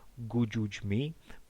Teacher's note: it is vital that we do not make this C Sound breathy in any way it is a pure C sound so not an aspired C